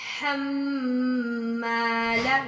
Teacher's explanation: میم پہ تھوڑا غنہ کرنا ہے